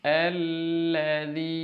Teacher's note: Huruf ya bertemu dengan huruf ya sebelumnya berharokat, ya sukun sebelumnya berharokat kasroh. Mad tabi'i dibaca 2 harokat